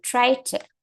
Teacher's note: o som da última consoante aqui vai ser enfraquecido para que a gente use o som da próxima consoante. Ou vice-versa. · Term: consonant to consonant linking